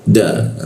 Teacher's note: ketika nun mati bertemu da maka ditahan berdengung ditahan dua ketukan